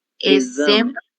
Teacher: a letra X tem som de Z